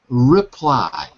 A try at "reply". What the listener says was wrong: When you're reading quickly, you're dropping the R sound and you're saying reply, like in Portuguese. reply.